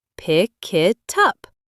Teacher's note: The k sound at the end of pick jumps onto it, making it sound like kit. And the T from it jumps onto up, making it sound like tup.